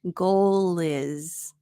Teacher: Here we have the L consonant sound linking to the I vowel sound.